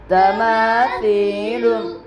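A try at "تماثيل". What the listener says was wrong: मारूफ मजहूल की आवाज आ रही है। तमासीलु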